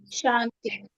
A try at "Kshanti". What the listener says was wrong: Shanti, not Shanti. There is a word K there before. Like the word Kshama, it's coming, actually Kshama is very connected word, Kshanti.